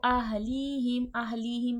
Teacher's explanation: یا مدہ یا ساکن سے پہلے زیر ہے کھینچ کے پڑھا جائے گا